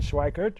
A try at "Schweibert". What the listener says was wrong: Schweibert. With a B, yeah. Schweibert.